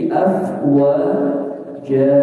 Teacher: Kemudian di ayat kedua ya ada di ayat di kata terakhir afwaja ada fathatain bertemu alif. Nah, ketika waqaf maka fathatainnya berubah jadi fathah dan dibaca panjang 2 harakat. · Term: mad iwad